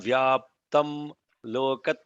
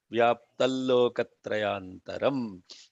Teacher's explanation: Like just like when you do the like the nasalization of the M as I, that is followed by the Ya. Here, when the L is there, the preceding Anuswara sounds like L, not like M